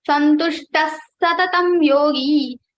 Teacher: Visarga sound will be converted into the same sa. So this sa will be repeated into 2 times, and this Visarga sound will be removed completely.